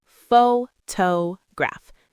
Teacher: take the word photograph. Pho-to-graph. Stress on the first syllable.